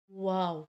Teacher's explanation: वाव अदा करते हुए हमारे लिप्स गोल होते हैं, गोलाई में अदा होता है वाव